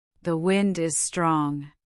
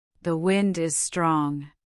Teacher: Pay attention to the emphasis on strong.